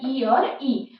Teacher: तालव्य स्वर तालु से निकलता है, वो है ई और ई।